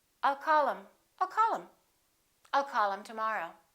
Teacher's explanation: Very often, instead of saying I told him, we just drop the H and we say I told him.